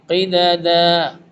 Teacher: قاف موٹے والا ہے اور دال بریک ہے